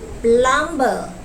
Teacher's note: The speaker voiced the consonant b, which is located in the middle of the word. According to the received pronunciation, the consonant b should be silent and not voiced.